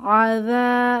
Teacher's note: যালের মাখরাজ খেয়াল রাখবো, জিহবার আগা দাঁতের আগা নরম আওয়াজ